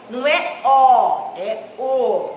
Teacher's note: Já a palavra o, ela é monossílaba, mas nós não falamos ela com intensidade.